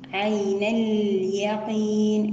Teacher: همزة الوصل تسقط وصلا، ونأتي ببينية اللام عين اليقين، أيضا هنا الياء مرققة والقاف مفخمة، ونقف بمد عارض للسكون.